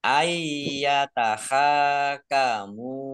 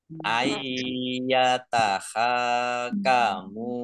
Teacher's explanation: nun sukun bertemu dengan huruf ya, bacaan idgham bi gunnah, masuk dengan mendengung. Ayyatahakamu, ya, idgham bi gunnah, masuk dengan mendengung.